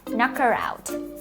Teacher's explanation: we link the R sound, the sound at the end of the word her to the beginning of the word out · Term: linking sounds